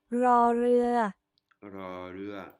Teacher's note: Hein, elle l'a prononcé comme un L. Beaucoup de taille le prononce aussi comme ceci, comme si c'était un L.